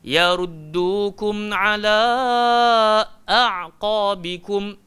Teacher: kadang kala kita tak bagi hak hamzah tu, kita pergi masukkan dalam ala. Contoh, yaruddukum ala tak betul.